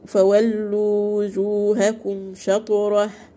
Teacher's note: ميم ساكنة وراها فاء اظهار شفوي